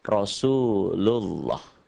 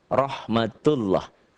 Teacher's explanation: Dibaca tebal berbunyi O, Allah, karena sebelumnya berbaris di atas atau dhammah. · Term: tafkhim